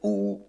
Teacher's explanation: In contrast, in the oo sound, most of the energy is near the fundamental tone, and the symbol also shows the center of gravity at the bottom. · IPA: [u:]